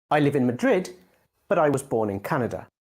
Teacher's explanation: you can use a rising tone to show that your sentence isn't finished yet for example I live in Madrid but I was born in